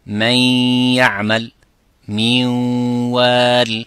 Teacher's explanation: For the ya and the waw, it's called incomplete because partially one of the ghunna part is there plus the ya.